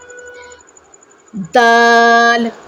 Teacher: जड़ में ज़बान की नोक लगेगी तो हमारा जो है वो दाल अदा होगा। हमने इसको दाल नहीं कहना, यानी तेज़ी के साथ नहीं पढ़ना।